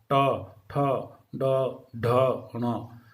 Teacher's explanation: इसी तरह से जो तालव्य ध्वनि, तालु जो स्थान है, उससे ठीक ऊपर का स्थान, उस थोड़ा थोड़ा चिकना भाग है, उसको हम मूर्धा बोलते हैं। तो जीवा थोड़ी सी मुड़ करके वहाँ टकराती है, इसलिए इनका उच्चारण स्थान होता है मूर्धा।